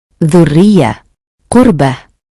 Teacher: Alasan damah juga termasuk harakat yang menyebabkan bunyi ra menjadi tebal. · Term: tafhim